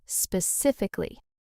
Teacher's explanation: The key is just big stress on sif. Everything else, lighter.